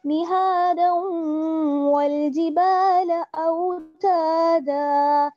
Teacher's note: دال کو جب واؤ سے ملائیں گے تو پھر ہلکا سا غنے کے ساتھ پڑھیں گے اور تھوڑا سا ٹھہریں گے بھی وہاں پہ, نہادا والجبال اوتادا.